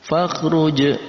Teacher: ada jim yang berharokat sukun, maka masuk dalam kategori qalqalah. Kita baca dengan dipantulkan.